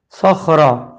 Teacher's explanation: جابس، اور پھر ہے صخرہ، سواد خا زبر سخ، را زبر را، صخرہ۔ سواد بھی موٹا ہے، خا بھی موٹا ہے اور را پہ زبر آ گیا تو را بھی موٹا ہے، صخرہ۔ اس کے بعد ہے بالواد، لکھا ہوا ہے بالوادی لیکن رکتے ہوئے آخری حرف دال کو جزم والا کر دیا، زیر ختم ہو گیا، اور جب دال کو جزم والا کیا تو دال پہ کلکلا ہوا، واو کو ایک الف کے برابر کھینچا ہے، بالواد۔